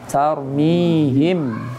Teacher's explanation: Tafkhim, karena ro-nya sukun didahului dengan huruf yang berharokat fathah.